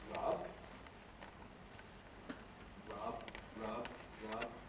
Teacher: if we have a word like rub, rub, rub, rub, we don't have to say it with full voicing.